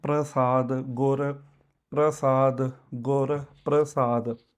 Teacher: ਪ੍ਰਸ਼ਾਦ ਨਹੀਂ ਕਹਿਣਾ ਤੇ ਰਾਰਾ ਪੂਰਾ ਨਹੀਂ ਬੋਲਣਾ